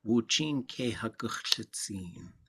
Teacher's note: there's no high tones in that whole thing